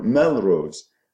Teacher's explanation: When you say Katie Rose or Melrose, then you transfer the stress to the first syllable, and that means the second syllable becomes weak. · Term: primary stress